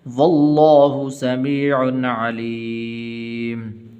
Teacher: لفظ اللہ کو پر کر کے پڑھنا ہے